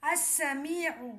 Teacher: لام خاموش رہے گا، الف کو سین سے ملائیں گے۔ جیسے ہجے تلفظ میں حمزہ سین زبر اس، سین زبر سا، السا، میم یا زیر می، السمی، عین پیش عو، السمیع۔